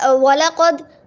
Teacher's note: واو کو جو ہے ہم گول ہونٹوں سے پڑھیں گے، اور گول ہونٹوں سے تو پڑھیں گے لیکن ہمارے جو گول ہونٹ وہ ایسے ہوں، بالکل ہی گول نہ ہوں، تھوڑے سے ایسے ہوں کہ ہم پینسل ہماری بیچ میں سے جا سکے، اتنا ہمارا بیچ میں سے سوراخ ہونا چاہیے۔